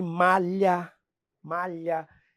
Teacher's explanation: é o l palatal que a fonética chama né o l tá encostando a língua tá lá no céu da boca